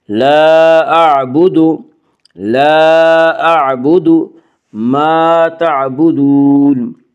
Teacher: ما الف مدہ، الف ہمیشہ مدہ ہوتا ہے، الف سے پہلے ہمیشہ زبر ہوتا ہے۔ الف مدہ کو 1 الف کے برابر کھینچ کر پڑھیں گے۔